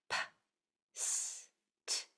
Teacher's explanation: they're all voiceless. There's no vocal cords being used, only air